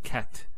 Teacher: the T doesn't have any vowel associated with it it's actually just a stop on the T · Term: sukoon, Sukoon